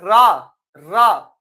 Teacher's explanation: रा जीभ क्या कर रही है, घिर्री कर रही है।